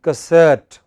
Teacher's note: It is cassette. The first syllable is hardly heard. It is not ca, it is just ka.